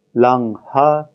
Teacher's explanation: we have a clear break between the nasal and the aspirate H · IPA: /laŋ-ha/